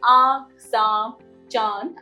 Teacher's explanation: व आपके नाक पर भी इंपैक्ट डालती है अनुनासिक यानी आ इसका उच्चारण नासिक और कंठ दोनों की सहायता से होता है